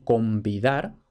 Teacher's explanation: V en contacto con n ya está la pronunciación bilabial